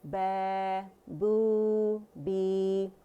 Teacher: الف مدہ کے لیے آواز اوپر جائے گی، و مدہ کے لیے گول ہو جائے گی، اینڈ یا مدہ کے لیے نیچے جائے گی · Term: حروف المد